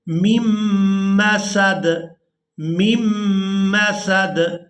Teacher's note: ہم نے پہلی میم کو دوسری میم مشدد کے ساتھ ملانا ہے، درمیان میں جو آپ نون دیکھ رہے ہیں اس کو ہم چھوڑ دیں گے